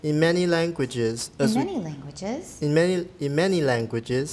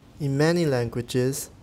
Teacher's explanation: It's a continuation rise, but we didn't stress languages because it's mentioned before.